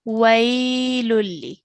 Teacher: we've said it as way, and we've carried that sound for 2 counts